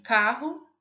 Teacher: o articulador ativo bate variadas vezes de modo rápido no articulador passivo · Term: vibrante